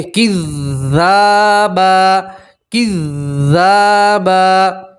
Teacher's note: 2 زبر کی تنوین کے اوپر آپ وقف کریں گے تو 2 زبر کی تنوین کو ایک زبر اور الف سے پڑھیں گے